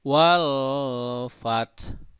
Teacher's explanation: ketika kita membaca kata fat itu ditekan cara pengucapannya fat sampai muncul bunyi ha tapi sedikit gitu